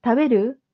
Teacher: with a rising intonation, question na agad yun